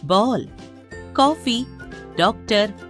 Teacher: अंग्रेजी भाषा के प्रभाव से हिंदी में एक नई ध्वनि औ को भी स्वरों में शामिल किया गया है। यह आ और ओ के बीच की ध्वनि है। इसका प्रयोग अंग्रेजी शब्दों के शुद्ध उच्चारण में होता है, जैसे बॉल, कॉफी, डॉक्टर आदि।